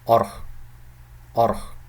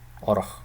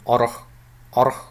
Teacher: So the first o is a normal short vowel, but the second one is a reduced vowel.